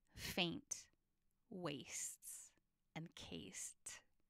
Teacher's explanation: it's not a precise consonant rhyme is it it's a vowel rhyme that's called assonance